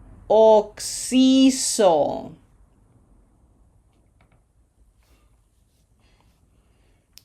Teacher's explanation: No open o. This has to be closed. Oo. Two c's.